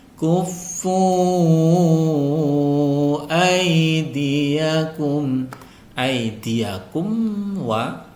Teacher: mim sukun bertemu dengan wau dibaca izhar syafawi sesuai dengan namanya dibaca jelas tidak boleh didengungkan